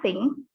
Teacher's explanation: And the first symbol, we use example thing. It's voiceless dental fricative